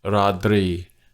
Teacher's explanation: Middle tone. You see no tone markers above Radri. So that means flat tone, flat tone. Normal voice if there's no marker, right?